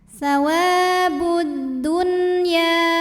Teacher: panjang dua harakat tasawabud Alif lamnya dinamakan dengan alif lam syamsiah karena alif lam menghadapi huruf Syamsiah yaitu huruf Dal maka alif lam tidak kita baca